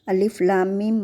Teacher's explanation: मद लाजिम का मतलब होता है 3 अलिफ के बराबर खींचकर पढ़ना, यानी लंबा करके पढ़ना